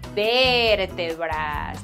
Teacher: you have to pronounce it really elongated, that ver part